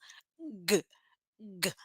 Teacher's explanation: lá na garganta a língua tocando lá atrás g g g explode o ar sonzinho curto e faz a força no pescoço